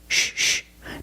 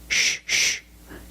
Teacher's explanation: the c is pronounced with the sh sound like in fish or wish sh sh there's no voice it's a soft sound